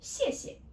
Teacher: The second one is soft and short and gentle. Okay, actually no tone there. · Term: neutral tone